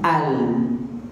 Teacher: Lam tu ni lidah hujung kena tolak pi atas